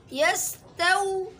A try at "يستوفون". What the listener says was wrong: सीन में आवाज रुके नहीं, यस्तौफून।